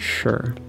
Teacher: because there's not actually a vowel here you have sha plus an er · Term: syllabic r